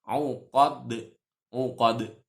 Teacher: Dalnya mati itu juga qalqalah. Jadi harus dipantulkan.